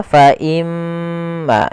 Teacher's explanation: Kita hukumi dengan bacaan gunah. Cara membacanya adalah menahan suara gunahnya.